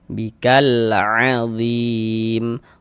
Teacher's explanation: Zim dibaca panjang. Zim ini namanya adalah mad arid li sukun. Namun zim itu pada awalnya dia mad tabi'i.